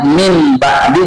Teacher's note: nun sukun ketemu ba suara n berubah jadi m